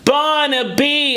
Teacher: And the B's aren't super plosive, they're lighter. Barnaby, almost like a popped B, if you will, not born with all that air pressure.